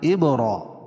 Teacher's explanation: را، کھڑا زبر قائم مقام الف مدہ کے، اور کھڑی زیر قائم مقام یا مدہ کے، دونوں جگہ ایک ایک الف کے برابر کھینچ کے پڑھیں گے